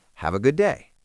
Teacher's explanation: the D at the end of good is often very light, almost swallowed, especially before another consonant like day.